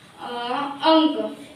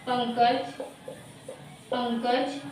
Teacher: और जब मुख से, इसमें मुख से क्या होता है, वायु कम निकले। नाक से वायु अधिक मात्रा में होती है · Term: अनुस्वार